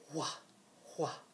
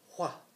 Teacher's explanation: still pronounce the WH with a breathier sound